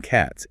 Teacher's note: After sounds without vocal cord vibration, voiceless sounds like in cats, it's S.